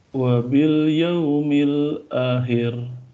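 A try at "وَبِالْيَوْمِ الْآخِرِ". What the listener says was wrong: A-nya itu panjang. Akhir. Ulangi.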